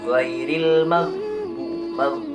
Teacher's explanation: Ghairil maghdubi, tidak ada qalqalah. Dan pengucapannya pun huruf ghin ini dari tenggorokan bagian atas.